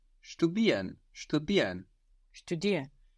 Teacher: It's contracted in spoken and the pronunciation you get is Ian. So you don't really hear the R there.